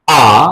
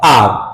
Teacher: আ বললে এটা হচ্ছে ব্রিটিশ আর বললেও হবে সেটা আমেরিকান